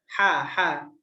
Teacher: Huruf ha-nya dari tenggorokan bagian tengah